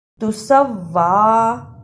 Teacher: سین پر زبر لیکن واؤ پر شد ہے، سین کو واؤ سے ملانا ہے۔ واؤ پر کھڑی زبر ہے، اس کو بھی تھوڑی دیر لگانی ہے۔